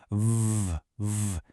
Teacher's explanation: You can feel that buzz, right? It's a voiced sound.